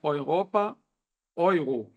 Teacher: É o mesmo ditongo como se fosse o E seguido do U, né? Por exemplo, Europa em alemão é Europa.